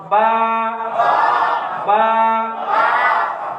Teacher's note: বা এর উচ্চারণ দুই ঠোঁটের ভিজা অংশ মিলাইয়া উচ্চারিত হয়।